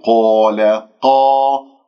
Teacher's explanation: قاف مفتوحة بعدها أليف مفخمة مرتبة أولى، لا تكور الشفاه